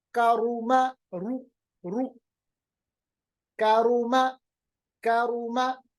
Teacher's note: اسی طرح را کے اوپر پیش ہے تو را کو پھر سے موٹا پڑھیں گے. کاروما رو رو کاروما کاروما. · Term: را موٹا